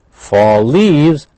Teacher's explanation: fall leaves that's Blended we have one L same or similar sound